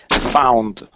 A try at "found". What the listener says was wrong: Good,